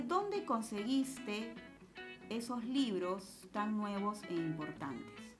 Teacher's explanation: importantes esta es una pregunta el detalle es que en ella aparece inicialmente un pronombre interrogativo entonces su tono final siempre será descendente